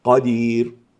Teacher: ففيها من دواعي التفخيم داعيان أنها مفتوحة وأنها حرف استعلاء